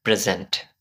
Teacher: যখন এই ওয়ার্ডটা নাউন হবে, তখন এখানের মধ্যে আমাদের প্রথম সিলেবলে প্রেশারাইজ করতে হবে।